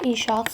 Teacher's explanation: Saitin biri düşdü, biri isə uzun tələffüz edildi.